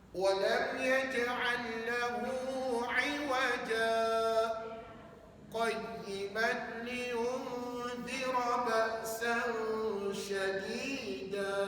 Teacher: puan-puan kena sambungkan iwaja dengan qayyimah, baru jadi sakta.